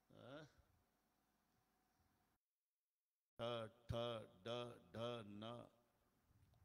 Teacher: प्रत्येक वेळेला जीभ वरच्या टाळूला लागते.